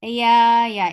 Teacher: Ya is light, make it two counts long.